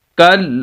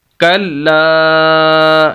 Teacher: آخری لفظ ہے کلا، کلا، کاف کو لام کے ساتھ، اور لام شد والی ہے اس وجہ سے لام کو سخت کریں گے. کل، اور آگے الف ہے اور یہ الف مدہ ہے اس وجہ سے لام کو لمبا بھی کریں گے.